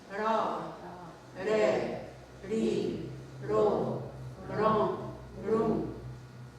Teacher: R, it sounds almost like an L or a rolling R. So some people have a hard time saying it, so they use an L, like it's easier until you get used to it.